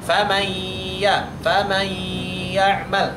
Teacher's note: Kan nunnya hilang. Seharusnya itu adalah nunnya tetap ada sehingga kita bacanya dengan cara idgham naqis.